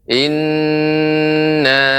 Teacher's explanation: nun yang bertasydid itu harus lebih ditekan lagi, tidak terlalu cepat temponya